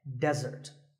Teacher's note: the stress is on the first syllable, which is de, desert.